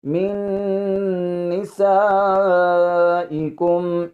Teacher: یہاں پر جو نون ساکن ہے اس کو نہیں پڑھنا، کیونکہ یہاں پر ادغام یرملون والا قاعدہ جاری ہو رہا ہے، نون کا اگلے جو نون ہے اس میں ادغام ہو رہا ہے، تو اس نون کو ہم نے نہیں پڑھنا۔